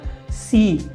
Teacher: सी बोलने के लिए हमें जीभ को दांतों से सटाना पड़ा